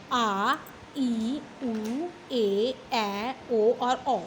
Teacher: जिन स्वरों के उच्चारण में ह्रस्व स्वरों से दुगना समय लगता है उन्हें दीर्घ स्वर कहते हैं। इनकी संख्या 7 होती है।